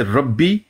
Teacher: तो फिर हम इस रा को मुफखम पढ़ेंगे, हालांकि इसके पीछे जेर है।